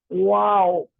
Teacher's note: اس کا مخرج اس کا مطلب ہم صحیح مخرج سے واو کو ادا نہیں کر رہے. واو کو ادا کرتے ہوئے اپنے ہونٹوں کو گول کرنا ہے, بند نہیں کرنا, گول کرنا ہے